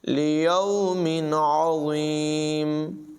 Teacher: انہم مبعوثون لیوم عظیم، عظیم عین کی آواز نمایاں کریں گے، ضا جو ہے اس کو فل ماؤتھ پڑھیں گے، پور پڑھیں گے